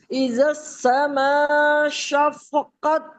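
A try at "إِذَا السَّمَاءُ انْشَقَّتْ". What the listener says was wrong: شفقت نہیں ہے، دوبارہ پڑھیں توجہ کے ساتھ. شف نہیں ہے، شین کو قوف سے ملانا ہے، فا تو ہے ہی نہیں یہاں پر.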